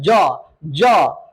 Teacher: ज किससे होता है? तालु से होता है।